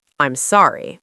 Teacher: with your voice going down, that is an apology